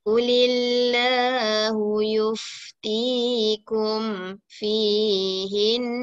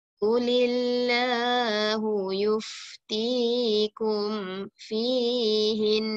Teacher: kalau nun sabdu, di akhir kita nak berhentikan dia, jadi kita kedengaran bunyi dengungnya